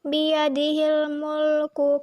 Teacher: huruf alif lam bertemu dengan huruf mim yaitu huruf komariah. Cara membacanya, lam mati dibaca jelas atau diidharkan. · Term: alif lam komariah